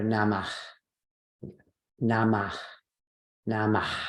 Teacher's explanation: process is called the sarga and what that one means is put a breathy sound an aspirated sound on the end of the word · so if you say this word or namah nama nama right there's this big puff of hot air at the end of the word · There's this big puff of hot air at the end of the word. And what can be confusing sometimes is sometimes it's just this breathiness at the end, namah, shanti, right? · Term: Visarga